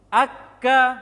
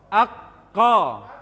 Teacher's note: Kof bukan dari bibir. Kof di tenggorokan, di pangkal lisan.